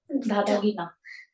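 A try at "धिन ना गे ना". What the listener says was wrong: Just little pronunciation. This last phrase was dha dha ge na. Okay, so make sure that you probably change a little pronunciation, and it is dhin na ge na. It's not just dhi, probably. It's there is dhin is basically like anusware varti dhin.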